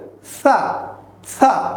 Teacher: হালকা দাঁতের মাঝখান দিয়ে বাতাস ছেড়ে দিয়ে সেটি আমরা উচ্চারণ করব